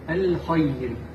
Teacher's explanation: حرف الخاء يجب أن يكون مفخم